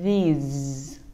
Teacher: lưỡi nó đã bị chèn hơi rồi cho nên nó sẽ rung cả lưỡi cả răng. Cả môi cũng bị rung luôn.